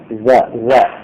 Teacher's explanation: Lidah, ujung lidah menyentuh gigi atas.